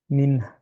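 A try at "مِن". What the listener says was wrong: না, পিছে চলে গেছে টাংটা, হ্যাঁ? হা এর মতো মনে হয়েছে। হা।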